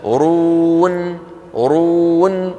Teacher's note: النون الأخيرة شو فيها؟ مطة بسيطة، هي أقصر من يس وأطول من تب